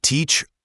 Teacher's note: teacher has a longer e sound and then that soft ch sound.